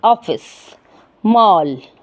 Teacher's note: आ और ओ के बीच की ध्वनि होती है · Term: आगत स्वर